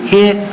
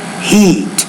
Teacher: one is a LAX vowel the other is a tense vowel